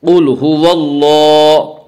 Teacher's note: هو اللہ، قل هو اللہ، اللہ کے اوپر کھڑا زبر ہے، کھڑا زبر برابر ہوتا ہے الف مدہ کے، اس لیے الف مدہ کو ایک الف کے برابر کھینچ کر پڑھیں گے